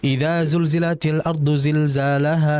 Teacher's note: huruf lam mati ini merupakan huruf yang memiliki sifat tawas. Harus dialirkan. Jangan dibaca cepat.